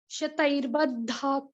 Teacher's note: ख पूरा नहीं आएगा, मतलब हलंत आएगा। और जैसे सांस छोड़ा तो हल्का सा ख सुनाई पड़ना चाहिए